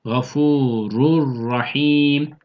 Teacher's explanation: Burada tutma miktarı şeddeli harfin hakkını verme kadardır. Fazla tutulmaz ve idgamla birlikte de gunne de yapılmaz arkadaşlar. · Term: idgam bila gunne